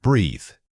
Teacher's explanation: This is a voiced example, meaning you must feel your vocal cords buzzing as you speak it. Don't just blow air.